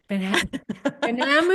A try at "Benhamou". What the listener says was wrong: The H is silent. It's the H. Yeah, that's always, it's silent.